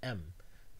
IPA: m